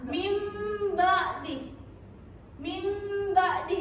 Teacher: Jadi cara bacanya itu diganti kayak bunyi mim. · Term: iklab